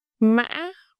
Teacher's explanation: The fifth one, ngã, is quickly raising.